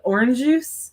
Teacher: I would have to blur the two J sounds together into like orange juice